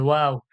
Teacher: দুই ঠোঁট গোল করে পাতলা আওয়াজে, দুই ঠোঁট গোল করে পাতলা আওয়াজে ওয়াও।